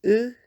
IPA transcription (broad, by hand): ɨ